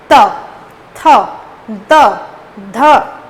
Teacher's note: त वर्ग के जितने भी वर्ण हैं उन सभी का अगर आप उच्चारण करोगे तो दांत को छूती है। त, थ, द, ध, तो ये जो है ना ये दंत, ये दांत से निकलते हैं।